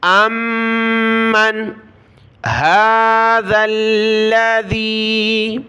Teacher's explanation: حمزہ کو میم کے ساتھ ملا، میم کو نون کے ساتھ، میم کے اوپر تشدید ہے تو ہم نے ناک میں آواز پیدا کرنی ہے جس کو کہا جاتا ہے غنہ، یعنی ہم نے غنہ کرنا ہے۔